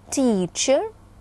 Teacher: этот суфикс произносится как э то есть редуцируется гласный звук редукция касается и качественной и количественной характеристики ещ раз давайте обратимся